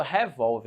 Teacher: Tá na penúltima sílaba. Opa, se ela está na penúltima sílaba, ela só pode ser uma paroxítona